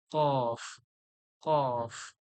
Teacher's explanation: ওই জীবের গোড়া, ওর সোজাসুজি তালু, যেখানে আলজিভ রয়েছে, ছোট্ট একটা জীব যা আমরা বলি, ওইখান থেকে বেরোবে কফ। কফ, কফ মোটা করে, কফ, কফ।